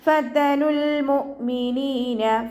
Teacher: മേലെ മുൻപല്ലിൻ്റെ അറ്റം താഴെ ചുണ്ടിൻ്റെ ഉൾവശത്ത് നനഞ്ഞ ഭാഗത്ത് വെച്ചിട്ട് ഉച്ചരിക്കുക.